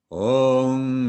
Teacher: in addition to closing our lips together in front, as we always do with M's, we will also bring the back of our tongue up against the back of the roof of our mouth so that we round our mouth to make a sound that comes out of our jaw as much as it comes out of between our lips.